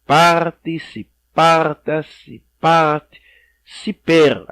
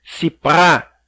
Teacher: observaram aí vocês que nós pronunciamos sempre paroxítona